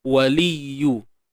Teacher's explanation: Ingat, huruf ya ni bersifat rakhawah. Suaranya terus mengalir.